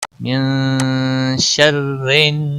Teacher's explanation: मिन शर्रिन नून मुशद्दिद पर गुन्ना होगा